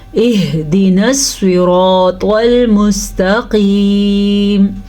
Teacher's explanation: سواد کو ہم پر پڑھیں گے کیونکہ سواد ہمیشہ ہی پر یعنی کہ موٹا پڑھا جاتا ہے